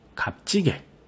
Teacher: 마지막 값지게의 경우에는 음절 끝에 2개의 음운이 올 수 없다는 자음군 단순화가 일어나서 시옷이 먼저 없어지고요. 갑의 비읍이 뒤에 있는 지읒에 영향을 줘서 된소리 대기가 일어나야겠군요